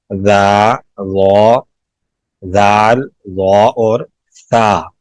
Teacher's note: زبان کی نوک ثنایا اولیاء کے سرے پہ لگے، کنارے پہ لگے تو 3 حروف ادا ہوتے ہیں